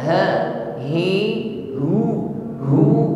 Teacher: ucapkan dari makhraj aqsal halqi, tenggorokan paling bawah, suaranya gemar, ya.